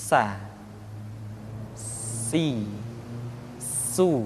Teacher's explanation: ketika kita mengucapkan huruf tsa ada suara tambahan yang menyerupai dengan suara belalang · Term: sifat sopir, sifat as-safir